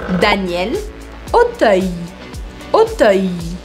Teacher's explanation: A-U, som de O em francês, e E-I-L, som de ai, ai. Então eu tenho que ir fechando a minha boca.